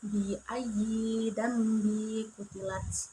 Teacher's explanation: Dan hukum bacaan ikfa yaitu non mati bertemu qaf dibaca secara dengung